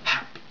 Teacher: that H sound has a lot of breathiness too